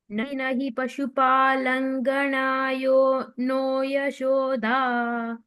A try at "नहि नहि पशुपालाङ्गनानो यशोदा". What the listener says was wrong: पशुपालांगना आ की मात्रा is पालांगना. pashupalangana.